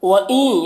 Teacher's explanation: نون ساکن کے بعد یا ہے، حروف یومن میں سے، تو ادغام ناقص ہوگا